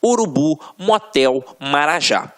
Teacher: oxítonas. A última sílaba é a tônica